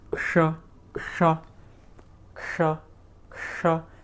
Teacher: you're making a k sound and you're quickly switching to a sh